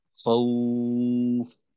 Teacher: মাদ্দে লিন হওয়ার কারণে ওয়াওটাকে একালিফ টানবো, আর ফায়ের দুই পেশ না পড়ে ফায়ে জজম পড়বো